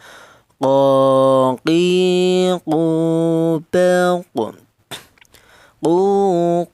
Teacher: Huruf qaf ini keluarnya huruf berasal dari pangkal lidah ya. Pangkal lidah itu lidah bagian belakang, yaitu ditempati dua huruf, yaitu huruf qaf ini dan huruf kaf ya.